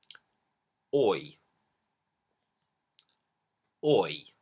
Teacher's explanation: it starts on this very sort of forward-placed lips forward or sound like the or in port or law and then it moves the lips come back relaxing and you end up in this sort of it shape oi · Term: oi diphthong